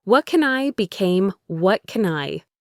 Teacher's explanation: the can is a function word and it's unstressed. So the a sound reduces to awah.